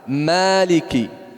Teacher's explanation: Orang baca maliki, dia tebalkan huruf mim. Tidak boleh ditebalkan huruf mim.